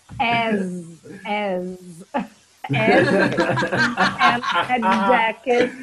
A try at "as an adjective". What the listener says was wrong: As an adjective. As an adjective. Oh, pronounce it together.